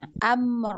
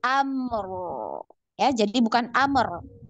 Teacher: Nah, ini sama-sama punya sifat tawasud ya, ada aliran suara ya, dua-dua ya, dikit. Amr ya, dialirkan baru masuk ro sukun. Amr ya, jadi bukan amr.